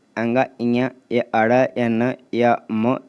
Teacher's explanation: वायु केवल नाक से निकलती है इस वर्णों में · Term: अनुस्वार वर्ण